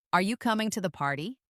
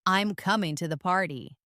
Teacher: That falling tone signals completeness.